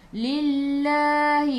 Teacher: Sebab sebelum lafzul jalalah ada baris bawah. Jadi kena baca nipis.